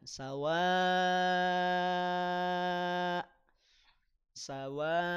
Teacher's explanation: Nah, boleh panjang 6 harokat di sini. Hamzahnya jadi sukun, maka putus suaranya. Ya, jangan dialirkan.